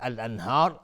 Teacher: الانهار الف لام قمری و نون ساکن بهش های دو چشم اظهار حلقی. را هم حکمش استعلاء است.